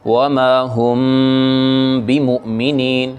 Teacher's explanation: میم ہونٹوں کو ملا کے میم کو ہونٹوں کی نرمی سے ادا کریں گے اور اخفا کی سی کیفیت ہوگی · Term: میم اخفا والی